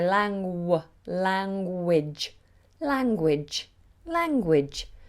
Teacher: I also almost do a w in the middle